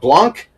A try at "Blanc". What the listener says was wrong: Blonde, not Blanc. The C is silent. Blonde, not Blanc. Blonde, not Blanc.